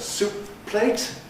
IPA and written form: ˈsuːp pleɪt (soup plate)